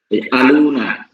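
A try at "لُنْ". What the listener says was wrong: আলু না হবে না, এটা সাকিন হয়ে যাবে, লুন। হ্যাঁ, জবর উঠে যাবে, অর্থাৎ 2 জবর না থাকলেই তো কেটে দিয়ে সাকিন।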